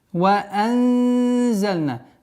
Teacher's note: Здесь у нас правило ихфа, сокрытие в размере двух огласовок, удерживаем назализацию, мягкое у нас.